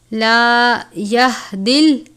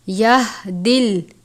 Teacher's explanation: یہ موٹے والا ہا ہے، حلق کے آخر سے پڑھتے ہیں یعنی بھاری آواز کے ساتھ